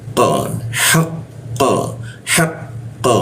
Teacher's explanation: Jadi tidak ada hembusan udara ketika membaca qo